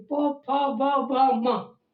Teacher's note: ओष्ठ से। इसमें और किसी की जरूरत नहीं, केवल होंठ चलते हैं